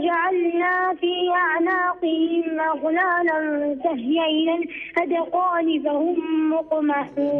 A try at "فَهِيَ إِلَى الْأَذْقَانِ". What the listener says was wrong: ما تقلقلش الذال، فهي إلى. فهي إلى الأذقان، ما نقولوش الأذقان، الذال هنا مش حرف مقلقل. إيه فهي إلى الأذقان، الأذقان.